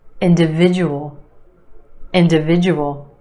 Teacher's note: five syllables in this word emphasis on the third syllable